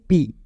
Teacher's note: जब आप पी बोल रहे हो यहां पे आपका lower lip and upper lip दोनों इवॉल्व हो रहा है इसमें से जो आपका लोअर लिप है दैट इज योर एक्टिव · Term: बायले बल